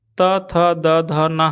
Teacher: त थ द ध न हम लोग जो पढ़ते हैं दंत से होता है